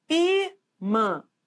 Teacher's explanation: É só você pronunciar, ó, ímã, não é assim? Então, o I é forte, então é uma paroxítona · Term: sílaba tônica